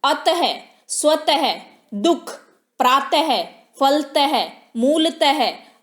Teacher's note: विसर्ग अनुस्वार की तरह विसर्ग भी स्वर के बाद आता है इसका उच्चारण ह की तरह होता है